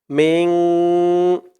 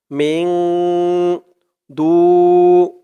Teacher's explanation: নুন সাকিনের পরে ইকফার 15 হরফের এক হরফ দাল আসছে মিন ইকফা গুন্নাটা নাকের ভেতরে লুকিয়ে করতে হয়